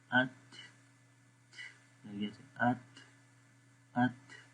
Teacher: تو یہ کیونکہ اس لیٹر کے اندر، اس حرف کے اندر یہ کوالٹی پائی جاتی ہے، یہ اس کی صفت ہے کہ اس جب یہ تا ہم پڑھتے ہیں تو وہاں پر ہوا تھوڑی سی جاری رہتی ہے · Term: ہوا کا جاری رہنا